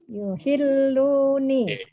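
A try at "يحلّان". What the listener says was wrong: Nomor duanya enggak yuhilluna, yuhillani. Ya, enggak ada yuhilluni.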